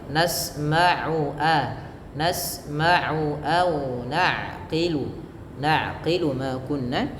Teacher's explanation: Usahakan jangan sampai masuk ke rongga hidung karena makhraj tempat keluarnya ain tidak dari hidung tapi dari tenggorokan yang tengah